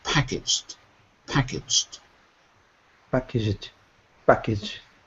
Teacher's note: don't say packed we don't add that Ed at the end you have to say it without the e so imagine the G and the D were together